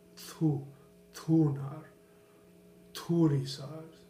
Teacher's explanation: it's more of the tongue behind the roof of the mouth, and it's aspirated, meaning that air is coming through it. So it's a thu, thunar, thurisaz.